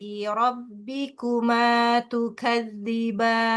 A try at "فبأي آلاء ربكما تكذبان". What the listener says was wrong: Ayyi bukan fabi ayyi, fa-nya jangan dihentakkan. Fabi ayyi ala.